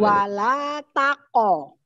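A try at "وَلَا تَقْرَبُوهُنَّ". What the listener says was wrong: Nah, tapi jangan terlalu panjang, sedikit saja. Wala taqrabu.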